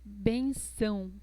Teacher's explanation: Colocamos el sonido nasal en la letra A.